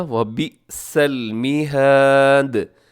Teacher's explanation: ساکن ہوگا، جب دال ساکن ہوگی تو دال ہوگی قلقلہ، اور دال باریک بھی ہوگی اور دال قلقلہ بھی پڑھی جائے گی